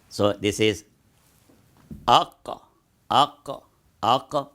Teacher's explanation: So Qaaf comes close to Uvular